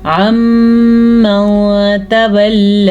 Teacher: نون ساکن کے بعد میم آ گیا ہے تو یہاں پہ ادغام بالغنہ ہو رہا ہے. آپس میں ان کو ملانا بھی ہے اور غنہ بھی ادا کرنا ہے.